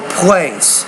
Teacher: you have to pronounce that P with more air